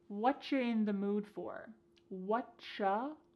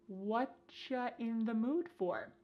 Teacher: Here the word you has been reduced to cha. Cha. This is extremely common in spoken English that the word you gets changed up in a lot of ways.